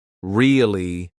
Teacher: if I stretch it out and say it with a flat tone, really, I sound sarcastic, like I don't believe what someone is saying.